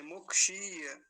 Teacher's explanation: दीर्घ ईकार का विशेष ध्यान रखेंगे, बड़ी की मात्रा का और लंबा खींच के बोलेंगे, मुक्षीय ऐसा करके।